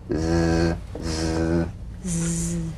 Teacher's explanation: The Z cognate S, a voiced S sound fricative. The tongue rim should gently touch the upper gum ridge. Z, z. The tip in gentle contact with the hard palate.